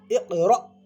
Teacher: حمزہ ساکنہ کے پڑھنے میں جھٹکا ہوتا ہے